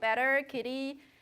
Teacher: The alveolar tap, now that you know, it happens in between two, when the T is between two vowels and the first vowel is stressed, you get a tap. · So you just flap your tongue tip to the alveolar area and then just kind of tap it. So you can call it a tap or a flap.